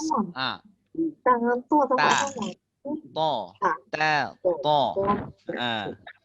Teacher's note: Makhraj ta dan to, ingat di ujung lidah berjumpa dengan tempat tumbuhnya gigi kacip atas. Ta, to, dia makhraj dia sama, tapi sifat dia berbeza.